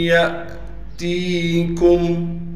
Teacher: یا کے بعد الف لکھی ہوئی ہے لیکن یہ الف نہیں ہے اس لیے کہ الف ہمیشہ خالی ہوتی ہے، اس پر ساکن آنے کی وجہ سے یہ حمزہ بن گیا۔ تا کے بعد حروف مدہ میں سے یا آ گئی، لہٰذا تا کو ایک الف کی مقدار کھینچنا ہے۔ کاف کو میم سے ملائیں گے بغیر غننے کے۔